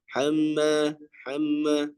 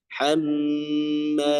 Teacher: pada huruf nun ya dan mim itu dipanjangkan gunahnya. Hamma jangan hamma hamma tapi dipanjangkan guna hammalatal.